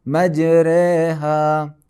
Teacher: الف مدہ کی آواز کو یا کی طرف مائل کر کے پڑھا جاتا ہے۔ اس حالت میں حرف را باریک یعنی ترقیق کے ساتھ پڑھیں گے۔